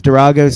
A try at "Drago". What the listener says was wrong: Durago? Is that what you said? It's Drago, not Dorago. What the hell's Dorago?